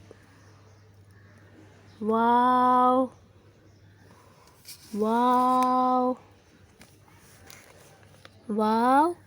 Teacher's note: واو دونوں ہونٹوں کو گول کر کے نا تمام بند کرنے سے ادا ہوتا ہے۔